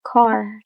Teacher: Pronouncing R after a vowel. Saying R clearly after a vowel often shows higher class or standard pronunciation. For example, the word car in middle class versus ka in working class. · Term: Post-vocalic R